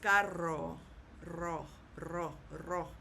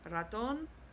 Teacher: you kind of hold that r a little bit if you can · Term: double R